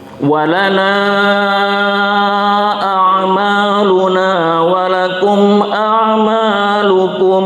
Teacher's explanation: Lana ini panjang nanya berjumpa dengan hamzah di lain kata di depannya itu, maka dibaca pisah dan panjang 2 alif sampai 3 alif ya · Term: mad jaiz munfasil